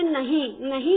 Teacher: नहीं का जब उच्चारण करते हैं तो नाक और मुख दोनों से होता है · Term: अनुनासिक